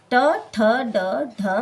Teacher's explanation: ट वर्ग ट, ठ, ड, ढ, मूर्धन्य। जब हम इन पांचों वर्णों का उच्चारण करते हैं तो इनका उच्चारण मूर्धा के द्वारा होता है।